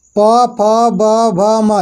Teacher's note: ओष्ठ, ओष्ठ ध्वनियाँ है, यानी कि ओठ से बोला जाता है